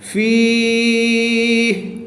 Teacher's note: یہاں پر وقف کی حالت میں مد عارض ہوگی، 2 سے 3 الف تک کھینچ کر پڑھیں گے